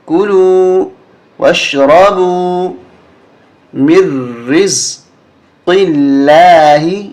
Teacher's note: یہ نون نہیں پڑھیں گے ہم میم کو را کے ساتھ ملائیں گے میم را زیر مر را زا زیر رز را پہ تشدید